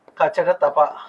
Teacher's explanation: వర్గ ప్రథమాక్షరాలు, తృతీయాక్షరాలు, పంచమాక్షరాలు, స్వరాలు, అంతస్థాలు, ఊష్మాలు ఇవన్నీ అల్పప్రాణులే అంటే ఉచ్చారణలో వాయు పరిమాణం తక్కువగా ఉన్నప్పుడు జరిగేటువంటి ప్రయత్నం అల్పప్రాణత